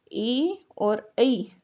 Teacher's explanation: ए और ऐ दो को मिलाकर बोला जाता है कंठ और तालव्य, इन दोनों के संयोग से इनका उच्चारण होता है।